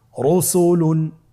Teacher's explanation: রয়ের উপরে পেশ এসেছে, তাহলে র হরফটিকে মোটা করে পড়তে হবে।